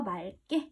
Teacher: 뒤에 기역이 오면 리을로 발음해준다.